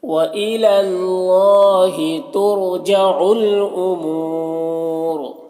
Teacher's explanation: اور وقف کریں گے تو را کو پر پڑھیں گے